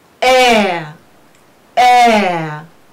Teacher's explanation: E plus schwa, we pronounce it as air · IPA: e+ə